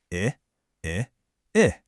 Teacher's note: It's not a long drawn out sound, is it? It's more like a quick steady pulse.